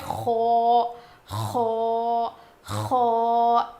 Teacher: اس کو تھوڑا موٹا پڑھیں گے، اس کی آواز تھوڑی اوپر جائے گی، اور جب ہم خو پروناؤنس کریں گے تو اس میں تھوڑی سی گاگلنگ ساؤنڈ آئے گا، یعنی کھردری آواز آئے گی.